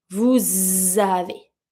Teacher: because it's a S sound, I'm going to pronounce it and link it with a Z sound, not a S sound